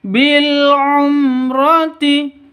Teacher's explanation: mim mati bertemu dengan ro jelas terang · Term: izhar syafawi